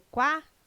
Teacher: O QU não é dígrafo, não é pronunciado com um som único. O quá traz um ditongo, dois sons UA.